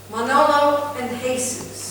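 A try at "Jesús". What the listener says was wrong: Yeah, you don't pronounce the J.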